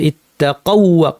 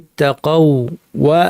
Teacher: ওয়াওয়ের সাথে ওয়াও, ইত্তাকাউ, ওয়াও সাকিন, তারপরে ওয়াও জবর, ইত্তাকাউ ওয়া আমানু, এভাবে পড়তে হবে। তাসদিদযুক্ত একটি ওয়াও বানিয়ে পড়তে হবে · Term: ইদগামুল মিসলাইনের